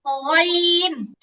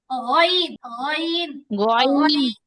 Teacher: গড়গড়া করার সময় গলায় যে একটা আওয়াজ হয়, ওই আওয়াজটা থেকে গইনের উচ্চারণ হয়। মানে আওয়াজটা একটু নরম হবে।